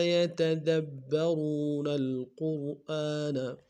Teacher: یتدبرون میں دال کو با کے سامنے لائیں گے، شد زور دیں گے، را کو واو کے سامنے لائیں گے، واو مدہ ایک دال میں کھینچیں گے۔